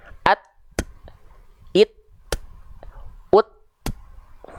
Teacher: Kalau percikan nafas, dia tertahan dulu suaranya, syiddahnya dulu, baru hamsnya. Kan tahan dulu tuh, baru keluar percikan nafasnya.